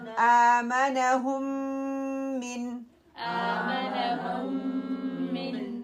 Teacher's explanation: من، آمنهم من یہاں پہ بھی یہ ادغام ہو رہا ہے، میم ساکنہ کو ہم ڈراپ کر دیں گے ، ہاں پیش میم سکون میم کسرہ میم، ٹھیک ہے، اس